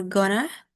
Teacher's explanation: The answers are gonna, from going to, the N in going influences the following sounds, and the T in to assimilates into the N sound. So it leads to the reduction and blends of the two words into one simplified double N sound. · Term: assimilation